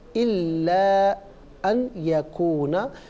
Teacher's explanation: मुहर्रमन अला ताइमिन यतअमुहु इल्ला अन यकूना, मिलाकर पढ़ने की सूरत में नून साकिन को या के साथ मिलाकर या की आवाज़ को गुन्ने के साथ अदा करेंगे